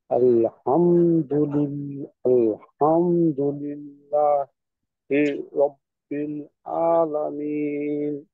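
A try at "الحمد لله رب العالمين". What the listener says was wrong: হামজার মতো হয়ে যাচ্ছে আইন, মাস করতে হবে।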